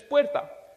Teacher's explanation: However, when it comes to the r, that sound is not in our database. The rrr, the rolled r, does not exist in the English sound database.